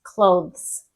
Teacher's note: We don't pronounce the E. So you're going TH to S, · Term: consonant clusters